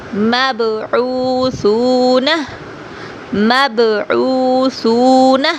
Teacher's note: با حروف قلقلہ میں سے ہے تو آواز کو تھوڑی سی جنبش دیں گے۔